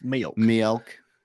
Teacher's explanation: Sometimes people go milk, like it's two syllables.